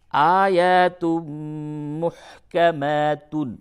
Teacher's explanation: تنوین کے بعد میم ہے، ادغام مع الغنہ ہوگا